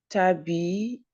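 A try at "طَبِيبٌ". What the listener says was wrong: ouais.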